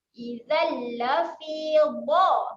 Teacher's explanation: tanwin tak selari berjumpa dengan huruf lam. Inni idzal. Jadi dia masukkan terus pada bunyi huruf lam. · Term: bacaan asimilasi